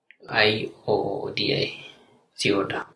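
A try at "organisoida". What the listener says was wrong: It was almost that, but it was first O-I-D-A. You said I-O-D-A. Organizoida.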